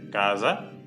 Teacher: existen por ejemplo cuando italiano hay una es entre las vocales generalmente tiene un sonido zumbado es decir se pronuncia como una es española pero haciendo vibrar las cuerdas vocales